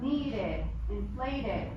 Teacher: what do we say after D and T? We're going to have the ID sound.